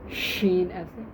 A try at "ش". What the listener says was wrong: ہاں نہیں شین میں اتنا زور لگانے کی ضرورت نہیں ہے، کیونکہ شین کے مقابلے میں کوئی نہیں ہے، ٹھیک ہے۔ سین کے مقابلے میں بیٹا تا بھی ہے صاد بھی ہے، ٹھیک ہے، 2 حروف ہیں، ٹھیک ہے۔ آگے